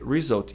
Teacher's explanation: esse U não tem som de U, tem som de A